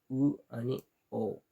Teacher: ज्या स्वरांचा उच्चार करताना ओठ पूर्ण गोलाकार असतात त्या स्वरांना वृत्ताकार स्वर असे म्हणतात